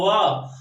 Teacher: तब दंतोष्ठ है, दांत और ओंठ से मिलकर बोला जाता है वाह